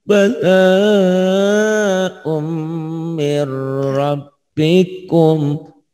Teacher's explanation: Mir nggak ditahan karena idgham bila gunah, idgham tanpa dengung.